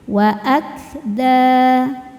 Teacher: Cara membaca nun sukunnya adalah dibunyikan samar-samar, siap-siap menuju dal disertai dengung. Jadi ujung lidah kita sudah mau persiapan menuju pangkal gigi seri atas makhraj dari huruf dal ya tapi belum nyampai sehingga menghasilkan suara yang ee keluar dari mulut. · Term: ikhfa hakiki aqrab